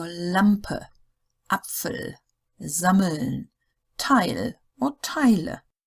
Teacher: the German L is pronounced like the so-called front L, the English front L, as in lamp, not like the back L as in rattle.